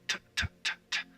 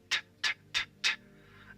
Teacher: T what happens when you say tttt what happens is that your tongue is touching your upper teeth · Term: the letter T